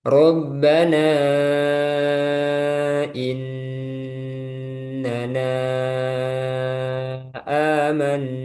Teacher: Bahkan ada yang membaca mad badal ini ada yang membaca enam harakat panjang amanna ya itu pada riwayat lain ada yang membaca enam harakat. Nah, di riwayat hafaz jalur syatibi itu membaca dua harakat amanna enggak boleh lebih